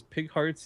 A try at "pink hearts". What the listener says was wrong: It sounded like you said pig hearts.